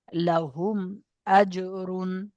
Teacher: মিম সাকিনের পরে বা এবং মিম ছাড়া অন্য কোনো অক্ষর এসেছে, তাই মিম সাকিনকে বিনা গুণনায় জাহির করে পড়তে হবে। একে ইজাহারে সাফাবি বলে।